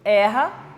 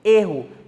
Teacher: Na primeira eu pronuncio erra, na segunda, como substantivo, eu pronuncio erro, mais fechado.